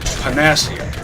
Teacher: It rolls off my tongue more naturally to say Panacea, with the accent on the second syllable.